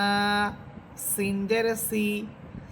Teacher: জিহ্বার অগ্রভাগ সামনের নিচের দুই দাঁতের আগার সাথে লেগে সিন হরফ, এবং সিন হরফে যে সিফাত ছিল, সিফাত হচ্ছে যে ঝিঝি পোকার মতো আওয়াজ হবে।